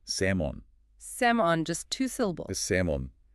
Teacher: That L is completely silent.